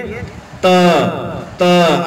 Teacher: जीभ के आगे वाला भाग है, आगे वाले दोनों दांतों के बीच में थोड़ा सा पकड़ी करके वापस आएगा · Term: त वर्ग